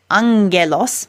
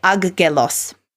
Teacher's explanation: in Greek you'll see that it has a different sound so when gamma is before certain letters including Kappa or another gamma it becomes like NG when they're next to each other for example the word Angelos